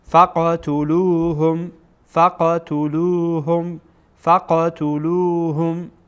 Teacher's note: فق فا با قاف وصل میشه، یک جا خوانده میشه. قاف در اینجا قلقله میشه، تکان میخوره چون از حروف قلقله هست.